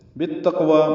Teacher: تا باریک ہے، قاف ساکن ہے، قاف پر ہے اور اس پہ قلقلہ ہے. واو پر کھڑا زبر ہے، وقفاً یہ 2 حرکات لمبا کریں گے. · با کو تا سے ملانا ہے، ادغام شمسی ہے، الف لام نہیں پڑھا جائے گا. بی اور التقوی ملا دیے گئے.